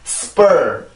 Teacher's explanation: S 다음에 만약에 P가 나오게 되면 이 P 소리는 원래의 소리를 잃고 된 소리로 바뀌게 돼요